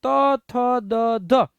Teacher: દંતીય એટલે દાંત દાંતે અટશે જીભ જે છે એ દાંતે અટશે